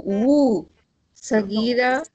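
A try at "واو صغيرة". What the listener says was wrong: Why you say wu, sagira? It's wow, sagira, wow. No, I don't say, I don't have wu, okay? I have wa, ba, dhamma, wow, sagira.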